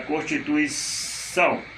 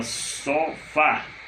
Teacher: é mais forte por exemplo se você tem a palavra constituição a última sílaba mais forte oxítona